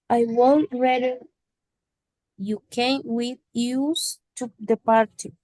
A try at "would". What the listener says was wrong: En el would veo que me pronuncias la L. La L es muda. No pronunciamos would. Es would. Would. una W, U, D. Would.